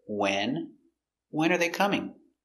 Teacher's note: Stress the first word. It's the important word.